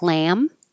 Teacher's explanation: the vowel will be a little bit longer in lamb